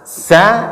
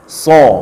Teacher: Secara makhraj dia tidak ada beda antara sin dengan shad, cuman bedanya tebal.